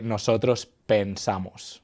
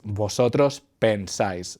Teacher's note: with nosotros and vosotros, it keeps the original E. This happens basically because the syllable is no longer stressed.